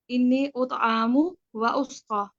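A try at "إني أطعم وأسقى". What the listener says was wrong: اطعام نہیں اطعام، ٹھیک ہے، عین پہ کھڑا زبر نہیں ہے نا، بس عین کو زبر کی طرح ہی ادا کریں، باقی ٹھیک ہے ماشاءاللہ، بارک اللہ فی علمک.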